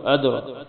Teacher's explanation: مد ہے تو اس لمبا کریں اس کو، ادرا دال موٹی، دال پہ کلکلا ہوگا، را موٹی ہوگی ، کاف بریک ہوگی، مل حطمہ وا موٹی ہوگی، آخر میں